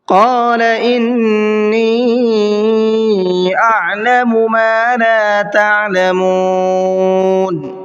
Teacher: قال کے قاف کو منہ بھر کے پڑھنا ہے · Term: بڑا قاف